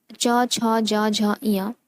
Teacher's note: तालु अर्थात तालव्य ध्वनियाँ हैं।